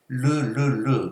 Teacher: 그 다음에 유음은 흐름 소리라고 해서 소리가 흘러가는 거야. 그러니까 르르르 할 때 코는 안 울린단 말이지. 근데 어쨌든 울림 소리는 울림 소리인데 흘러가는 소리다.